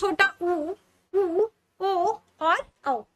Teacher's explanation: वृत्ताकार स्वर होते हैं वे स्वर होते हैं जिनके उच्चारण में होंठ वृत्त के समान गोल हो जाते हैं